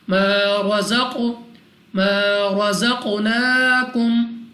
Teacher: زا کو سختی سے ادا کیا جائے گا، قاف مستعلیہ میں سے ہے، موٹا پڑھیں گے، اور دوسرا قلقلہ میں سے بھی ہے تو قلقلہ بھی کرنا ہے، یعنی ہمیں اپنی آواز واپس سنائی بھی دینی چاہیے ادا کرتے وقت۔